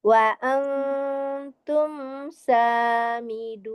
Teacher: Imnya itu dia tawasud atau bainiyah ya. Hukumnya izhar, mim sukun ketemu dengan sinnya, tapi sifatul huruf mimnya itu tawasud